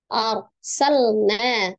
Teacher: Ar, ro, sukun, sebelumnya fathah ya. Kalau ro-nya dibaca dengan tebal atau tafkhim.